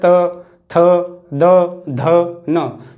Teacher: जो जीभ है वो दांत यानी कि दांतों से स्पर्श करेगी, जैसे त थ द ध न, तो हमारी जीभ दांतों से लगेगी।